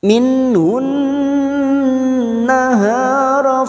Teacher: masuk pada huruf nun dan mendengung selama dua atau tiga harakat